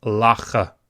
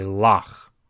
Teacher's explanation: It's simply closing that syllable. If it comes at the end of the word, lach. Notice it's at the end of the word. You don't say lacha. It's simply lach.